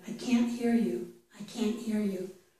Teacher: Both can't and the verb hear are stressed. · It's a full /æ/ in this word. · We put our tongue on the ridge behind our teeth for can't. We just don't complete it. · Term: the T